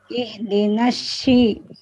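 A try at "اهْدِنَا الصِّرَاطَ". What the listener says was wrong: Nah, enggak. Sui. Sui. Sui gitu aja coba. Sui, jangan pakai y. Sui. Kalau ada baca sui, ihdinas sui. Jadi dialihkan, jangan shi langsung tapi sui. Ya, gitu cara baca huruf shad.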